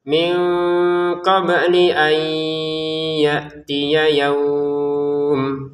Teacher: Di sini nun sukun mutamakaf baca dengan samar, ba-nya dipantulkan ya.